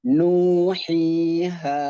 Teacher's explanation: Istifal, vokalnya saat dibaca 3 huruf mad itu nuhiha. Istifal. Pangkal lidah itu tidak terangkat.